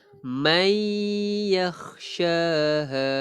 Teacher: nun mati bertemu ya idgham bi gunnah.